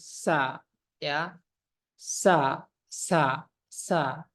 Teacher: huruf Sin sa hams dia napasnya mengalir